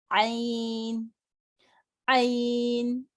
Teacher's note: اگر عین پڑھیں گے تو اس کا مخرج الگ ہو گیا اور یہ حرف بھی غلط ہو گیا. تو اس میں ہمیں پڑھنا ہے حلق سے گہرائی کے ساتھ